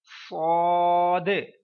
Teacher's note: سیٹی کی آواز بھی آئے اور موٹی آواز میں بھی